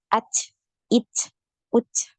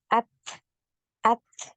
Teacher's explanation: ini tidak punya aliran suara ya aliran suaranya tertahan H ya Jadi yang benar itu tertahan dulu aliran Suaranya Baru ngalir nafas